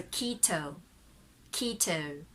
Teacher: Okay, so if it's American, mostly the word keto, so Americans say keto. But for British, the T is very clear.